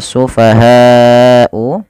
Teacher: panjangkan lafal bunyi ha sepanjang empat harakat atau lima harakat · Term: mad wajib muttasil